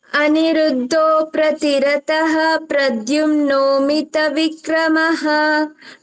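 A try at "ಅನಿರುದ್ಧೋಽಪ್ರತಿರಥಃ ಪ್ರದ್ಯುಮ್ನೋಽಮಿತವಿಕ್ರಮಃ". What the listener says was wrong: ರಥಃ ಹೇಳ್ಬಾರ್ದು, ರಥಃ ಹೇಳ್ಬಾರ್ದು. ರಥ ರಥಃ ಬೇಡ ಬಾ. ಅನಿರುದ್ಧೋ ಪ್ರತಿರಥಃ ಇಲ್ಲ. ರಥಃ ಬದಲು ರಥ ಹೇಳು ಅಂತ ಅಷ್ಟೇ ಹೇಳಿರೋದು.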